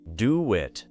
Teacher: The small W-like connection helps the mouth move from one vowel to another.